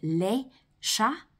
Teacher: you're not going to hear the S's at the end of either of those words, or in fact the T at the end of chat